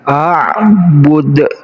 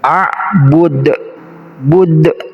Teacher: ketika kita membaca Dal yang sukun maka harus diqalqolahkan artinya qolqolah itu pantulan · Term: kolkolah